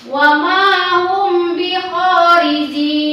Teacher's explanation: Yang kedua, Idgham membacanya yaitu dengan suara samar antara min dan ba pada bibir. Kemudian ditahan 2 harakat seraya mengeluarkan suara ifa dari pangkal hidung.